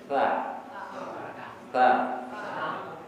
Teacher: di ujung lidah sekarang sentuhkan ke gigi atas